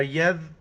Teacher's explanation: ربنا وما یذکر، یا کو ذال کے ساتھ ملائیں گے اور ذال کے وقت زبان باہر نکالنا ہے